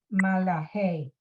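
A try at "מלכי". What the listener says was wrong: Malche, right? There's no vowel under the lamed, under the l. So it's just malche.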